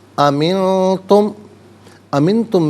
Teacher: امنتم میں نون ساکن ہے، اس کے بعد تا حرف اخفا آ رہا ہے، تو نون ساکن کو اخفا کے ساتھ پڑھیں گے. اخفا کہتے ہیں ناک میں آواز لے جا کر گنگنانا.